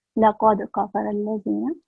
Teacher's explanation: And I think when she read laqad, there must be thick sound of qaf and the kalkala sound.